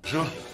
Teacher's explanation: Il prononce b’jour, b’jour. Et c'est bien sûr plus informel, plus familier. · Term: contraction